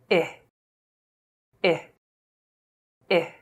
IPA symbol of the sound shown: ɪ